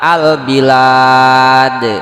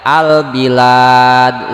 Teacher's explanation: Jadi tulisannya ada, bunyinya juga jelas kedengeran, disebut alif lam qamariyah.